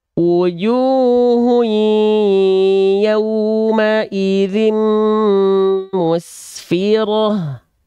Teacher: Ada dhammah tain pada hun berjumpa dengan huruf ya. Ini idgham bigunah, tapi dia nakis. Ya, dengungannya tidak sempurna.